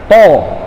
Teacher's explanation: Huruf to dia itu makhrajnya, tempat keluarnya, ya. Ini lidah kita tempelin di belakang gigi atas, di gusinya.